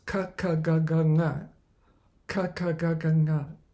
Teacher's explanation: the ku varga, ka ka ga ga nga, ha, and the visarga, visarjaniyanam, have as their place kantaha, the throat